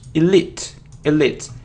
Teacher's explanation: and the stress is on the second syllable